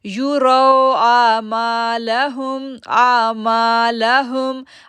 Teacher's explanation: لیروا را کو موٹا پڑھیں گے کیونکہ اس کے اوپر زبر ہے